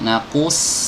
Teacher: ketika kita mengucapkan qaf, ku, sodnya itu nggak usah ditarik. Naqus, kalau ditarik jadi sin.